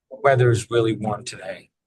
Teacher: And you put a little bit of emphasis on really, which I think is appropriate because it's saying it's not just warm, it's really warm.